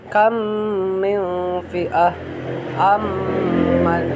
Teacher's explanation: cara membacanya adalah seperti menyarakan mim rangkap atau ditasydidkan dan wajib dibaca dengung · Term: idgham mislen